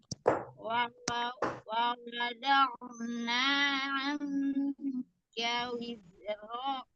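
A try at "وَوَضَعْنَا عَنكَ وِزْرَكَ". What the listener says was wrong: Nggak panjang. Anka wizrak. Wa wada'na anka wizrak. Wizrak. Do'na. Do. Hati-hati Zai sukunnya memantul. Ya Umi ketika sukun. Alirkan. Wizrok. Beda ya.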